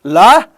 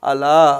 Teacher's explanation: లానేమో దంతమూలీయ పార్శ్వికం అని అంటాము, అలానేమో మూర్ధన్య పార్శ్వికం అని అంటాము. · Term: పార్శ్విక ప్రయత్నం